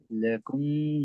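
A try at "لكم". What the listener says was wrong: आप मीम पर गुना कर रहे वजह क्या है इसकी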